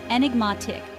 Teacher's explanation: The pronunciation is enigmatic, with the stress on the third syllable.